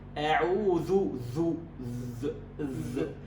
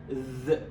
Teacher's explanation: هذا الصوت يجري عند السكون، ذ. هذا الصوت يجري لكن لا يوجد نفس لأنها من حروف الجهر